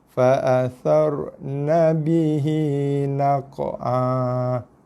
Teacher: Okey, jaga naq'a. Panjangkan dia 2 harakat.